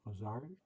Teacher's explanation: I should pronounce the second syllable with a higher accent